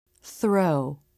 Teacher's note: Notice how the lips are starting to flare for the R as the tongue comes through the teeth for the unvoiced th.